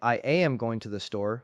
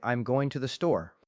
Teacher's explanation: A learner might say I am going to the store, stressing every word equally, but a native speaker would say I'm going to the store. The words am, to, and the are reduced. They are pronounced quickly and quietly.